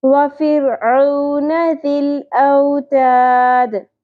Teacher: تا کو باریک رکھنا ہے، پور نہیں کرنا